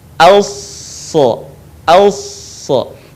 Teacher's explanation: Dan sifat serta karakternya pun tidak jauh berbeda dengan huruf sin. Yang membedakan antara sin dan shad adalah suaranya yang menebal saat kita melafalkan huruf shad.